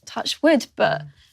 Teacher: performs the whole vowel with her glottis partially closed. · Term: vocal fry